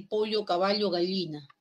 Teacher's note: las laterales la l de Lola y esta doble l que los limeños no la tenemos